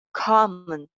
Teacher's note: first जो syllable है, वो उसको हम बिल्कुल clear voice में थोड़ा सा जोर देके थोड़ा सा लंबा बोलेंगे. और इसी तरह जो second syllable है, उसको unstressed, dull voice में बोला जाएगा.